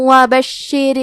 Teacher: وفتح قریب، کلمت بشر میں شین پہ تشدید ہے تو ہمیں تشدید کو ظاہر کرنا ہے۔ را کے نیچے زیر ہے تو ہم را کو زیر سے پڑھیں گے اور اس سے پتلی آواز میں بھی پڑھیں گے